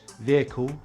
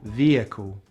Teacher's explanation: The letter H in the word vehicle is pronounced with a short vowel I in British English and a long vowel E in American English